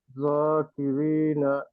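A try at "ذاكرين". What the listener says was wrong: জ কেন হবে? এটা তো হেভি লেটার না। যা, যা, যাকিরিনা।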